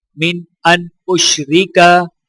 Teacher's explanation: دونوں نون کے اوپر غنہ نہیں کیا جائے گا کیونکہ نون کے آگے حروف ہلکی حمزہ ہے